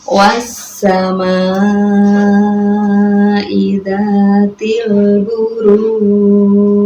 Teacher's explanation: apabila huruf qolqolah sebelumnya ada mad arid lis sukun, maka cara membacanya yaitu dipanjangkan terlebih dahulu, baru huruf qolqolahnya dipantulkan. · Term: qolqolah kubro